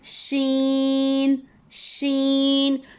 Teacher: तालू जो एक दांतों के करीब, एक एकदम हमारे हलक के करीब जहाँ सॉफ्ट वाला हिस्सा होता है, और एक दरमियानी हिस्सा। तो जो ज़बान का दरमियानी हिस्सा है ऊपर के तालू के दरमियानी हिस्से पे जब लगता है तब शीन की अदायगी होती है।